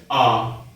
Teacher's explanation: जिन स्वरों को बोलने में जीभ बहुत नीचे चली जाती है उन्हें विवृत स्वर कहते हैं। जैसे आ, इसमें क्या हो रहा है कि जीभ काफी नीचे चली जाती है, आ।